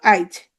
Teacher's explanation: পরের ই বা উ স্বরধ্বনি আগে উচ্চারিত হবে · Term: অপিনিহিতি